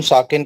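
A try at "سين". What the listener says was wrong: सीन। आखिरी में सीन है, से नहीं है, सीन।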